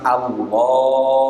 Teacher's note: Kemudian huruf ha sifat yang ketiga adalah istifal, yaitu posisi pangkal lidah rileks atau rendah, atau suaranya yang dihasilkan tipis